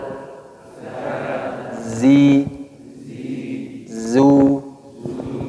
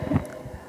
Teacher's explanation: Huruf zai keluar dari ujung lidah yang bertemu dengan bagian dalam gigi seri bawah.